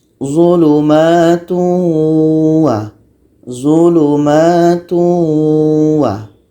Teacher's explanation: Ini tanwin bertemu waw. Tanwin kita masukkan kepada bunyi waw. Jadi bunyi tanwin ini hilang. Menjadi zulumatu wa.